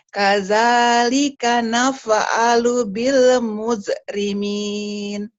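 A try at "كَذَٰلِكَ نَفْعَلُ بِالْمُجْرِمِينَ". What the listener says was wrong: Kadzalika naf'alu bil jimnya belum keras tuh. Bil mujair, mojok, bil coba. Nah, mujair, jim keras. Bil coba.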